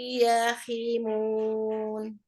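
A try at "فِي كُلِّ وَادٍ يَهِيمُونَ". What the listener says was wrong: Jangan hi. Yahi. Nah, oke, tapi di-nya belum masuk itu ke hidung. Masih wadiya. Itu masih begitu. Harusnya masukin lagi ke hidung. Dipaksain ke hidung gitu suaranya.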